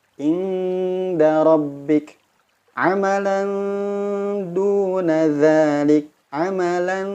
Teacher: ikhfa akrab ini suara ikhfanya atau suara samarnya itu lebih dominan, lebih banyak porsinya daripada bunyi dengungnya